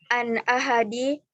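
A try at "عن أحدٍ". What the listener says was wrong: an ahadin, tidak ada yang menghalangi bertanwin, tanwinkan aja.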